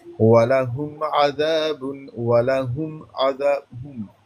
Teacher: اظہار میم پر دیر نہیں لگاتے اور میم کو ظاہر کر کے پڑھنا ہے